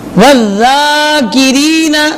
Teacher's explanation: ذال پہ تشدید آئی ہے، ذال کو پڑھتے ہوئے سیٹی نہ نکلے